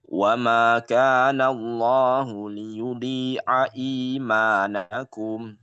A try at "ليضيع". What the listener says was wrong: Dhainya agak ditebalkan sedikit. Liyudhai'a imanakum.